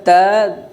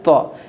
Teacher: تا کو باریک پڑھا جاتا ہے، طا کو پر پڑھا جاتا ہے